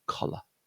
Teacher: Yeah, so we've got the stress point on the first syllable, collar. And the second syllable is a good example of a schwa sound, the L followed by a schwa